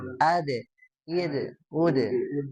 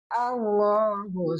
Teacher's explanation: Nah huruf dal kemarin kita sudah bahas ya. Sudah ketika dia disukunkan ada sifat yang harus selalu diutamakan ya atau ditonjolkan. Apa itu? Qalqalah ya.